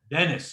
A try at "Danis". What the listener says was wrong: Not as in Dennis, but Danis, like there's a little like a silent a slight Y there, Danis.